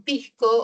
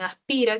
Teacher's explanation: La S se aspira como en pisco o como en aspira